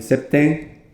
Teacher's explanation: Empezamos, en ejemplo, con el número 7 en latín, septem al origen, probablemente al final pronunciado más bien septem, con una vocal nasal y al final septe